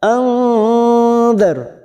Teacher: Nun sukun bertemu dal ikfa hakiki kita samarkan bunyi nun sukun 3 harokat. Anzar ra sukun yang ditolik fathah kita baca tafkim